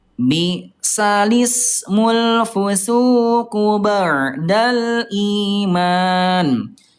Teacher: Kalimat bal ismu ya dipindahkan harakatnya menjadi balismu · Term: naqal